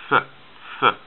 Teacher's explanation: It is a strong voiceless sound.